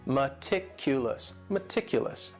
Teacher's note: The next word is meticulous. And this word has 4 syllables, and the stress is on that second syllable